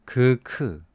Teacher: all the sounds from the back of the roof of the mouth